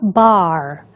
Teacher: É o caso, portanto, da palavra bar, onde nós vemos claramente a pronúncia desse R, até de uma forma um pouco mais extensa.